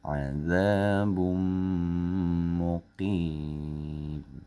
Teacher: Ban jadi bam sambil tahan. Azabum muqim, jadi bum masuk ke mim dia tahan. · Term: idgham bil gunnah